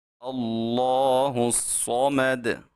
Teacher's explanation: یہ صاد لام تعریف حروف شمسیہ کی وجہ سے، یعنی اس کے ادغام کی وجہ سے مشدد ہوا ہے، تو ہم اس کے اوپر خوب سختی کریں گے اور اس کو موٹا بھی پڑھیں گے۔